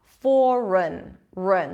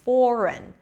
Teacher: So it's an R sound, a schwa, and an N.